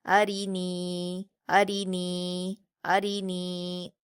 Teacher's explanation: نون کو. نون پر یا مدہ ہے، اس کو 2 حرکات کھینچ کر پڑھیں گے